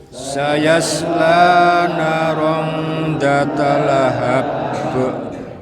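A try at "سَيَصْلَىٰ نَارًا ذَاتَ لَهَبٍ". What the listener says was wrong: Panjang pendeknya ya. Nanya sama zanya panjang Bapak. Sekali lagi, sayasla naran dzata lahab. Dzata lahab.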